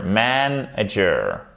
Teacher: vous avez votre accent tonique sur la première syllabe